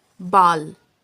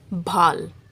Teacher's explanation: The simple B sound is pronounced soft and quick, but the sound bhay is pronounced with extra air.